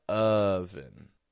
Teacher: I'm not stretching it out just because it's an O spelling. My lips are kind of neutral. My jaw drops lightly. It doesn't drop that much, just drops a little. But my tongue is low in the back of my mouth and it's low in the front. Not ah or oh, but oven. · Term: short U